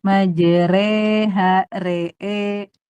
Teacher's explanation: imalah itu fathah condong ke kasrah.